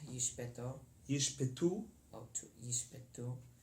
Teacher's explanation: the first shva is silent, and the second shva is pronounced with a short, slurred sound.